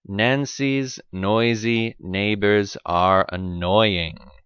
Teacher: but actually there is no breath coming out of your mouth you use your tongue to stop your breath and make the sound resonate in the nasal cavity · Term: the n sound